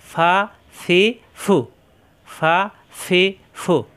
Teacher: আগা নিচের ঠোঁটের পেট ফা দুই ঠোঁট একত্র হবে না ফা উপরের দাঁতের আগা নিচের ঠোঁটে লাগিয়ে ছেড়ে দিলেই হয়ে যায় ফা